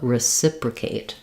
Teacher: So one thing to watch out for is if we have something like reciprocation, an Asian word will be stressed on the A. In reciprocate, we still have the clear A, but we don't want to stress it.